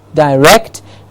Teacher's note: to direct, rect getting the stress